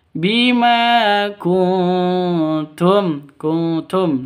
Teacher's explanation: nun mati bertemu dengan ta. Samar didengungkan siap-siap ke huruf t-nya karena bacaan ikhfa. · ma panjang 2 ketukan karena ada alif diawali dengan fathah. mad asli atau mad tabi'i. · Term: ikhfa hakiki